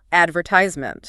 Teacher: Americans stress the third syllable, advertisement.